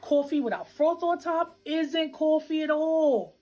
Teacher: One feature common in New York City is what we call a raised vowel in words like thought and cloth